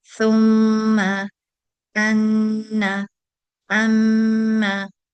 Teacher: because of the letters meme and noon, when they have the mark of shadda, in addition to saying that sound with two measures, we say it with the inherent characteristic of ghunna.